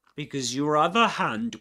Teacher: Because your other hand, in this case, we've got a linking r sound connecting these two words